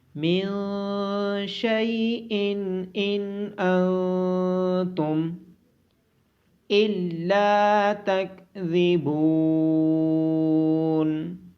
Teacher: من شیء ان انتم الا تکذبون، لام کے بعد الف مدہ ہونے کی وجہ سے لام کو لمبا کیا جائے گا۔ ذال کو نرمی کے ساتھ پڑھا جائے گا، اور با کے بعد واو مدہ ہونے کی وجہ سے با کو لمبا کیا جائے گا۔